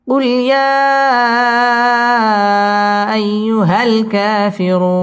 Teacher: মদ্দে আরজি 3 আলিফ টান দিয়ে ওয়াকফ করতে হবে।